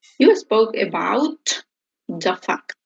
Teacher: So we join the two words here. About the fact, so we eliminate the T.